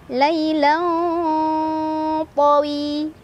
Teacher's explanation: Cara bacanya, tanwin fathah disamarkan ke huruf to sambil berdengung. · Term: ikhfa aqrab